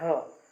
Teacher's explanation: फिर उसके बाद आता है ह, ह इसको बोलने में आपको कंठ की मदद लेनी पड़ती है, तो अहम कंठ्या, ह जो है वो कंठ्या है।